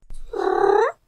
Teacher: At the bottom, we have the fundamental frequency, the pitch contour. It rises towards the end, and it's fairly high-pitched. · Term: chirrup